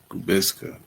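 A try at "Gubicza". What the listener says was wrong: No, the C is silent, so it's Gubiza.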